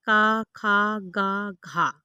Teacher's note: कंठ ध्वनियाँ जो कंठ से उत्पन्न होती है